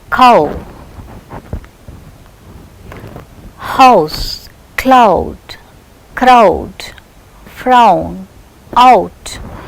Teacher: the glide begins at a back open position with unrounded lips to a centralized back just above half close position.